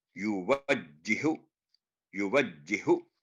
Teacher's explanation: آگے پھر دیکھیں یو وجی کے بعد پہلے ہا پر جزم ہے، پھر ہا پر تشدید ہے. پہلا ہا سائلنٹ ہوگا، دوسرا ہا 2 سٹیپ کے ساتھ بولے گا